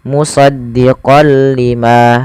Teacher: Idgham artinya memasukkan, bila gunnah tanpa disertai dengan gunnah. Jadi kita hanya memasukkan saja tanwinnya kepada huruf lam dan tidak ditahan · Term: idgham bila gunnah